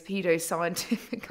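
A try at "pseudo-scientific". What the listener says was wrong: Pseudo, not pedo. You said pedo-science. Yeah, pseudo.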